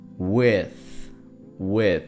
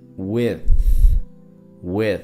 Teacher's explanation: TH, entonces es poniendo la lengua entre los dientes de arriba y de abajo.